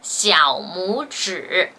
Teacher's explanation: Only 母 becomes the second tone.